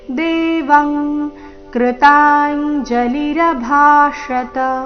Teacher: ಇಲ್ಲಿ ಅನುಸ್ವಾರದ ಉಚ್ಚಾರಣೆ ಕ ವರ್ಗದ ಅನುನಾಸಿಕದ ರೀತಿ